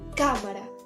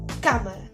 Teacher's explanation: la a es una palabra esdrújula y dice pronuncia cámara y metemos la fuerza de voz en la primera sílaba